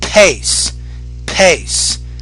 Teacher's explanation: you're not really pronouncing that P with enough air.